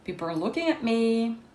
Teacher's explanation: C'est la non-prononciation du T. Donc, on a un arrêt dans les glottes. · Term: glottal stop